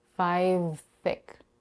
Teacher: we have the defone I followed by The Voice fictive v this final V in five has to blend with the voiceless th sound in the beginning of the next word thick